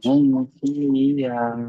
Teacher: মিম সাকিনের পরে বা মিম ছাড়া ফা এসেছে, তাই একে বিনা গুণায় জাহির করে করতে হবে।